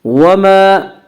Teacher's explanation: وما الف مدہ، الف ہمیشہ مدہ ہوتا ہے، الف سے پہلے ہمیشہ زبر ہوتا ہے، الف مدہ کو ایک الف کے برابر کھینچ کر پڑھیں گے